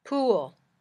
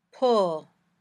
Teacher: Your lips are also rounder for oo than for uh.